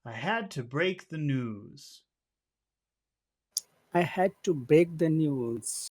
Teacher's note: you hear that it's short long short long short long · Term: perfect Rhythm